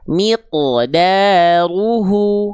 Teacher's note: Tapi ketika huruf qof dan huruf th, tho dan qof, karena dia huruf qalqalah yang sifatnya adalah tebal, maka dibaca dengan sambil mengenaikkan pangkal lidah. Ketika memantul pangkal lidahnya masih nongkrong di atas. Jadi bunyinya enggak akan e.